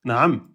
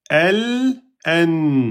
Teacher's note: L'extrémité de la langue en appui sur la papille incisive légèrement en dessous de la lettre lem et en étant accompagnée du nasillement provenant de la cavité nasale. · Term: la lettre noun